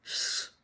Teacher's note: Hear it right there, that long sh at the end instead of a shite with a crisp t